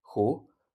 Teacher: The Middle Chinese form would turn out to be xuX, so with a rising tone